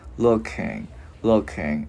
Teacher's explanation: mình ngân cái chữ ngờ ra